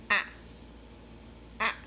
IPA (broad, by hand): ae